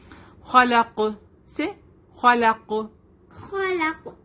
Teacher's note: جزم. تو قاف ساکن بن جائے گا تو ہم یہاں پر قلقلہ ہوگا